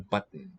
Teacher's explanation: we transitioned straight from the t closure into the nasal syllable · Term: nasal nucleus